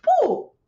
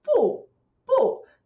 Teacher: this tone is a very short, very strong tone. Very short, but very strong. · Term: fourth one